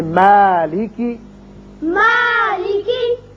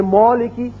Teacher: اگر کوئی پڑھ دے مولکی تو یہ غلط ہے. کیوں کہ میم جو ہے یہ باریک پڑھا جانے والا حرف ہے، اس کی وجہ سے الف بھی باریک ہوگا